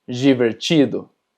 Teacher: cuando tenemos DI, también se pronuncia ji